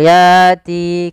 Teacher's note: Di sini ayati adanya fathah bertemu dengan adanya hamzah bertemu dengan huruf mad, yaitu berupa alif. Kemudian lafal yati kedua-duanya mad tabi'i, panjangnya 2 harakat